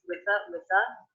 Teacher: I pronounce the ending th unvoiced